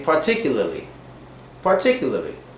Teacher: we don't pronounce the last R in particularly. We kind of say particularly.